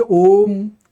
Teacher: ओम आप एक बार ओ बोलिए। ओम दो बार ओ बोलिए। माने दो मात्रा का समय लीजिए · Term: दीर्घ